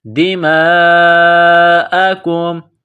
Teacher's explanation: کاف کو میم کے ساتھ ملانا ہے، کاف کو باریک کرنا ہے